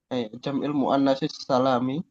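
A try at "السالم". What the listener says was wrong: salimi ya, li dengan kasrah.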